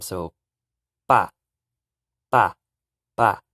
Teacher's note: a little p and a little b at the same time